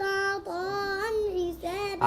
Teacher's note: التنوين وبعده حرف الحاء، ما هو الحكم؟ إظهار حلق